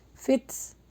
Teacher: تا کے اوپر جزم ہے، تھوڑا سا ہمس نکلے گا۔